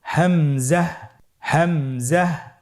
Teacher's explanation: হামজা হরফটি উচ্চারণের ক্ষেত্রে বারিক করে উচ্চারণ করতে হবে এবং এখানে টেনে পড়া যাবে না। দ্রুত পড়তে হবে।